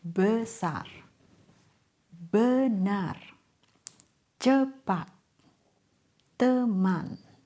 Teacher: It's a neutral vowel. Your mouth barely moves. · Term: schwa